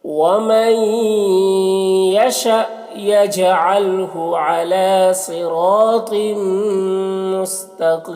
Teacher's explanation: ومن یہاں پر نون ساکن کے بعد یا ہے، نون کو یا سے ملا کر غنہ کے ساتھ پڑھیں گے، اس کو ادغام ناقص کہتے ہیں